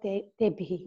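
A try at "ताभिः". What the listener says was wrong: So therefore, tabhi, not te bhi.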